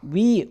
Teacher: 위 해보세요. 위 할 때 이 양입술이 관여를 하게 되고 그 입술이 동그랗게 변해요. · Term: W 소리